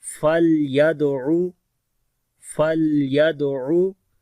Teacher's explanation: لام کے اوپر توسط ہوگا، دال کے اوپر کلکلہ ہوگا